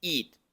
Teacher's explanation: El pronombre it se pronuncia con I corta y el verbo eat se pronuncia con I larga, que es como una I del español pero más larga